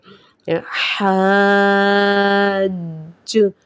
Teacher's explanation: جیم کے اندر ایک جماؤں جیسی آواز پیدا ہوئی ہے، قلقلے کی جو آواز پیدا ہوئی ہے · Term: قلقلہ